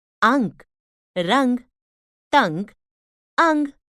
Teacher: अंग इसे अनुस्वार कहते हैं इनको नाक से बोला जाता है